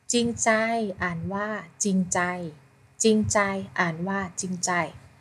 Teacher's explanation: จอจานควบกับรเรือออกเสียงจอจานเพียงตัวเดียว อ่านว่าจริงใจค่ะ[เพลง]ต่อไปนะคะเราจะมาฝึกผ่านบทอ่านเสริมเรื่องคำควบกล้ำไม่แท้แล้วก็ให้เด็กและฝึกสังเกตทำนี่นะคะว่าคำใดเป็นคำควบกล้ำไม่แท้ค่ะ[เพลง]ไปจะไปจ้าไปอ่านหนังสือการ5โอเคเริ่มมีสระน้ำใสในสระน้ำใสปลาใหญ่ปลาน้อยปลาซิวปลาสร้อยล่องลอยอวดลายต้นไทรใบหนาพุทราเรียงร้ายเกลื่อนกลาดหาดทรายใบสายตามลมศาลาริมทางสร้างไว้ให้ร่มคนแวะมาชมสุขสมเพลินตาในสระน้ำใสน้ำใจใส่ขว้าใจจริงมีค่ายิ่ง